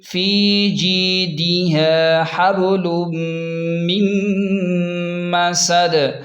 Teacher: میم زبر م، سین زبر س، دال دو زیر دن، میم مسدن. وقوف کی صورت میں دال ساکن کریں گے اور قلقلہ بھی ہوگا دال پر